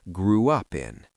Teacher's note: Some speakers add a soft W sound to glide between the vowel sounds.